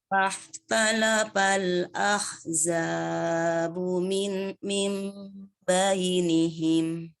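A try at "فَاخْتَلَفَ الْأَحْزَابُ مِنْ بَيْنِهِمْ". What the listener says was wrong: Zainya kepanjangan jadinya lebih daripada 2 harokat. Diulang.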